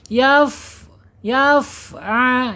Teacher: Enggak boleh yafa'a mantul karena fa ini bukan huruf qalqalah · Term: huruf haas